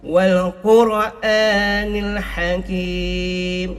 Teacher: Wal Quran ini adalah alif lam qamariyah. Wal Quran kena jelas. Qaf ni adalah huruf isti'la, kena keras.